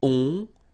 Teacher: And then the ending for il, elle will be ont. You don't pronounce the final t, so you get the nasal on.